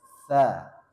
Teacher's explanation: ini ujung lidah bertemu ujung gigi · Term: huruf t